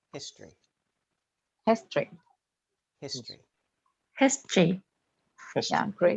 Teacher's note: in history the o is often not pronounced